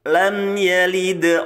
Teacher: mim itu punya sifat tawasut ya pertengahan antara suara yang tertahan dan suara yang mengalir nah mim itu termasuk pertengahan pertengahannya jadi tidak ditahan tapi juga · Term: izhar syafawi